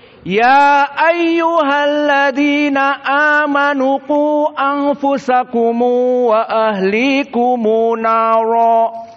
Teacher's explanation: dibaca dengan ikhtisar Hanya dua harakat bagi Mad Jaiz munfasil dan mad badal dan juga dibaca dengan silatul mim pada mim aljam maka dibaca